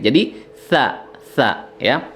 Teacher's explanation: untuk sa itu makhrajnya ujung lidah dengan ujung gigi seri ya, ujung gigi seri.